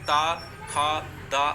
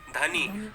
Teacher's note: तो यहाँ पर दवात अगर बोलना है, अगर मुझे बोलना है कि धनी बोलना है, धनी, तो धनी अगर जीभ आपकी जो है दांत में नहीं टच होगी तो आप कभी भी धनी बोल पाओगे, नहीं बोल पाओगे, ठीक है। तो दांत की मदद से बोले जाने वाले वर्ड आपको दंतव्य व्यंजन कहलाते हैं